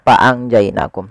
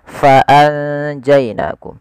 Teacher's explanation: harus dibaca dengan fa pakai f, jangan pakai p, jangan fa'anjainakum tapi fa'anjainakum.